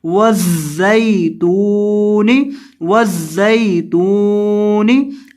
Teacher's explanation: زا کے اندر سیٹی کی آواز پیدا کرنی ہے